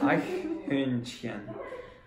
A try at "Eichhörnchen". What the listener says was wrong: It's not chen, it's hien. Eichhörnchen.